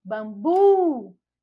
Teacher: a última sílaba é a sílaba mais forte